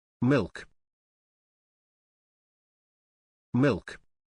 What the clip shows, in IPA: mɪlk